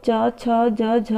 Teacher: च छ ज झ यह सभी जो होते हैं तालव्य होते हैं